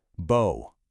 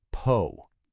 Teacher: Now listen to the next one, and notice the little puff of air that comes out